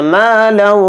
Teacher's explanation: ادغام کر کے ہم چلیں گے, یعنی غنہ اس طرح سے مالا, تھوڑی دیر آواز روک کر چلیں گے. اور میم کے ساتھ الف مدہ ہے تو میم الف زبر ما کو تھوڑا کھینچ کر پڑھیں گے.